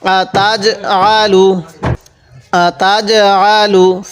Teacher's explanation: জিমটা একটু ধাক্কা দিয়ে পড়বো, জিমটা তো কলকলার হরফ।